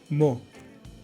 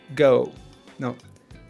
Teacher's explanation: Lips rounded, very fairly closed. Sound clean and pure. O. No glide like English. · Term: The vowel O